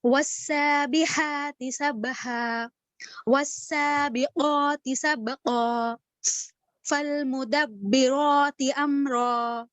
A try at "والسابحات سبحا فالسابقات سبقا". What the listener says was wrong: دیکھیے پھر سے وہی غلطی ہوئی. والسابحات سبحا ہے, اس کے بعد فالسابقات ہے, وا نہیں ہے فا ہے. والسابحات سبحا فالسابقات سبقا.